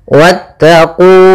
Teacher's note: wanya langsung ke huruf ta dan wawnya tidak dipanjangkan, meskipun kita mendapati bahwasanya kalau ada huruf alif setelahnya maka dia panjang.